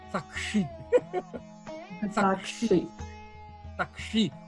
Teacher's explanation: o S palatal, você tem que engolir ele.